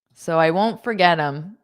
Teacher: in spoken English, we generally take them and then we just pronounce it as m